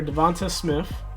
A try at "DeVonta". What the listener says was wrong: It's Devontae. It's Devontae, not Devonta. You just say A.